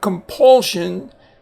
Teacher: since it's followed by a bilabial or a letter that uses both lips then the N changes by assimilation